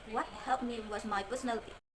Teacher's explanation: the main stress is on third part neck. So it sound the strongest.